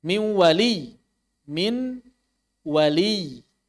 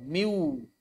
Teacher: Di sini, apa yang menyatu ke dalam huruf wau adalah makhraj lisan dari nun. Lidah sudah tidak berfungsi lagi, langsung masuk ke dalam wau.